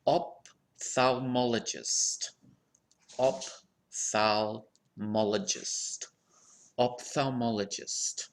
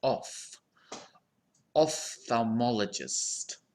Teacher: this word has two common pronunciations so the first syllable can be pronounced as op or off